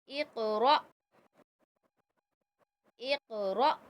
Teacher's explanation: क़ौफ़ मैंने कलकला किया और रॉ को हमज़ा से मिलाया तो मैंने झटका लगाया। जब भी हमज़ा पे जज़म आएगा उसको हम झटका लगाएंगे।